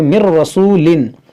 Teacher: یہاں نون ساکن کے بعد را ہے تو یہاں پر ادغام کریں گے